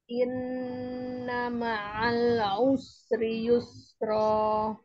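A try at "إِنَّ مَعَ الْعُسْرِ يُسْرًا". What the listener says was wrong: Kurang dikit nunnya yuk. Nun tasdid. Tinggal an inna ma'al. Nggak mau lamnya ter pantul. Usri yusra rakhawah sin sukun.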